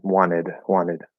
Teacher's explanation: we'll drop the t and we'll connect the n